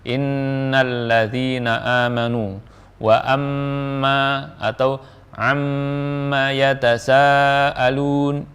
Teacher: inna dan amma selalu disertai dengan gunnah